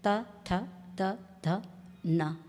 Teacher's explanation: हमारी जीभ का अग्र भाग जो है वो दांतों को स्पर्श करता है त थ त ध न तो ये उसके बाद कंठ के बाद तालु तालु के बाद मूर्धा और मूर्धा के बाद दांत का उपयोग होता है इसलिए इस वर्ग को दंतो दंतव्य भी कहते हैं। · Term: दंतव्य वर्ण